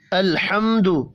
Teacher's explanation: لام اور میم ساکن ہے، قلقلہ نہیں کریں گے دونوں پر۔ میم ساکن کے بعد دال ہے۔